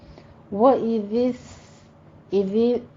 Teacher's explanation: ذال کو نرمی سے پڑھیں گے، اس میں سیٹی کی آواز نہیں آنی چاہیے